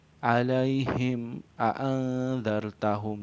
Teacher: untuk cara membacanya sendiri terang dan jelas, di bibir dengan mulut tertutup, dan harus lebih dijelaskan lagi, diidharkan lagi apabila mim sukun bertemu dengan huruf waw dan fa. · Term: izhar sapawi